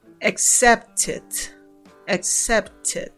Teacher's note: Si ustedes se dan cuenta, en la pronunciación se pronuncia como si fuera id.